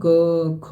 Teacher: क ख अगर आप बोलेंगे तो कंपन नहीं होगा ज़्यादा, है ना, क ख, तो वो आपका अघोष होता है।